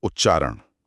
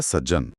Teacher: त अपने बाद आने वाले अक्षर की परछाई बन जाता है। अपने पड़ोसी जैसा ही भेष बदल लेता है। जैसे उत प्लस चारण में त के बाद च आया तो शब्द बना उच्चारण। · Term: शैडो लॉजिक